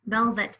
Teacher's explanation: I can actually hear that schwa sound in the second syllable.